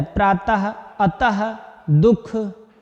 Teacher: विसर्ग का उच्चारण किसकी तरह होता है? आधे हा की तरह।